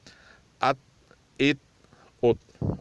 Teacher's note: اور تا جو دو نقطوں والی، یہ بغیر قلقلے پڑھیں گے